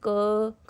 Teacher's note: स्वर तो स्वतंत्र होते हैं पर व्यंजन का प्रयोग स्वर के साथ ही होता है। जैसे क बोलेंगे तो पीछे अ स्वर की आवाज आएगी।